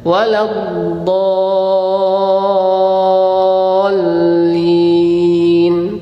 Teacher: Kalau antum mensukunkan huruf lam, tertutup suaranya toh? Tertutup lidahnya. Nah, suaranya itu menyimpang ke samping kiri dan kanan. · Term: Inhiraf